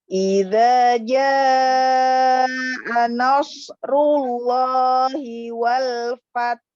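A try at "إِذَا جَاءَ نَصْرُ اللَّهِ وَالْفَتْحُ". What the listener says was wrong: Nggak kedengar lagi haknya? Ya, seperti yang tadi yang kedua yang udah dibenarkan kedengar. Fath. Ta-nya sukunkan dulu. Fath. Tapi cepat. Fath.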